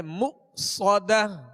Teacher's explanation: یہاں حمزہ ساکن ہے، اس کو جھٹکے سے ادا کریں گے مؤصدہ. صاد کو سیٹی کی آواز میں اور پر پڑھیں گے مؤصدہ.